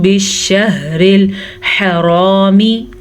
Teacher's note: حرامی را کو دیکھیں پر پڑھا جا رہا ہے. آخری لفظ کو لمبا نہیں کرنا.